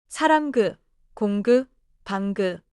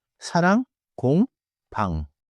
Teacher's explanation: In that dialogue, 공 and 방 both end with final 이응. Both endings are nasal and smooth.